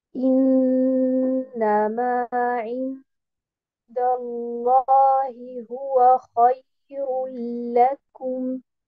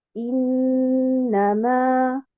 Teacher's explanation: je mets un nabr sur harakat al-mim et non pas sur harakat an-nun